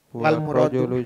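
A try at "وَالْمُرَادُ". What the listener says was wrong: kenapa ditasdid dalnya? Wal muradu biasa.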